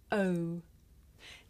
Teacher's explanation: this is a diphthong a double vowel sound the shape the mouth makes changes from the beginning of the sound to the end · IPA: /əʊ/